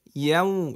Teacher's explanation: ওয়াও বলার সময় ঠোঁট কি হবে, গোল হবে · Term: লিনের হরফ